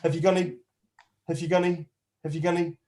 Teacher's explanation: because it's not stressed those unstressed syllables have been squeezed together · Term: squashed it all up together